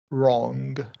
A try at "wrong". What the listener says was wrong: The only thing, and so the R sounded terrific everywhere. Remember not to release that G. Wrong.